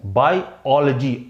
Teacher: तो इसमें स्ट्रेस किस पे, इसमें सेकंड सिलेबल में स्ट्रेस है